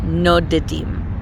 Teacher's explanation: But the shoresh nun daled daled, which means wandering or migrating or traveling, if we want to say they wander, now we're going to have two daleds with a schwa in between. So what we have to do is stick a little short little eh in there, and we get nodedim.